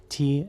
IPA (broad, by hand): tiː